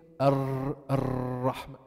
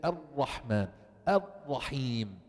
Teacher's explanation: You should not vibrate your tongue when pronouncing the ra.